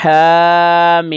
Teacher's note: طاسین، ہا کے اوپر کھڑی زبر ہے اور ہا کو ہم ایک الف کے برابر ہم کھینچ کر پڑھیں گے، اور میم کے اوپر مد ہے تو اس کو ہم 4 الف کے برابر کھینچ کر پڑھیں گے۔ حامیم، میم چونکہ غیر قلقلہ ہے تو آواز لوٹ کر نہیں آئے گی، میم ساکن ہے تو اس کا دھیان رکھنا ہے۔